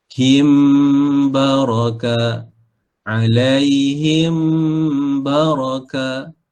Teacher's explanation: Mim bertemu dengan ba. Ya, ikhfa syafawi. Panjang dia 2 harakat.